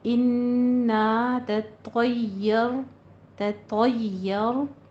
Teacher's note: طا بھی پر، پھر رو بھی پر پڑھیں گے، تا کو پہلے تا کو باریک رکھنا ہے